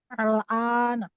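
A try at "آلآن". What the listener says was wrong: Bukan A-nya. Yang di awalnya dipanjangin. Al-ana. Berarti kalau al-ana yang pendek berarti nggak ada A-nya. Tapi kalau al-ana berarti ada A-nya.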